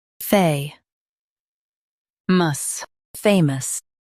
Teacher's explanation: Emphasize fay and keep mus light.